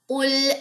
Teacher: قل میں قاف جو ہے وہ موٹا ہے تو اس کو آپ نے موٹا کر کے پڑھنا ہے۔